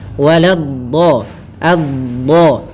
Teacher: salah satu sifatnya istitalah, memanjang dulu dhatnya